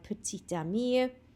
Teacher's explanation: fel arfer ni ddim yn dweud y ta, ond oherwydd mae'n dilyn gan llyfariad, ni yn dweud petit ami